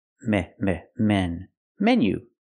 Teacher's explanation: It's not menu, it's meh, meh, menu. It's a short closed sound, eh, eh, like 10 and bed.